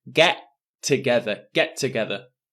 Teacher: notice there is only one T sound. I don't say get together, get together.